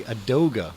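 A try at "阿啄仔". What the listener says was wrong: This is ADOA. Actually, we call it with the G silent.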